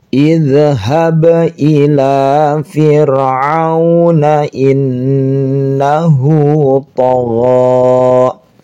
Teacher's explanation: Ini memenuhi syarat, sebelumnya berharakat dan setelahnya berharakat, maka boleh dibaca mad silah qasirah panjang 2 harakat